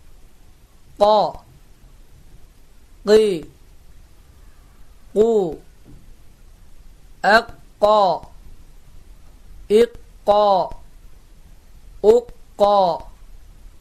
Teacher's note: kaf harfinin de mahreci boğazın Evveli